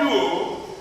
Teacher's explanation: Now, the word luo the accent naturally stands on the upsilon.